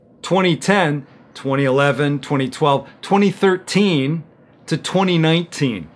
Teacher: I'm putting the stress on the second part of the word, on that second syllable